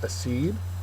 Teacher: The second syllable is accented.